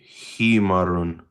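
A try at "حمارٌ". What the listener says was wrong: It's a long aleph there.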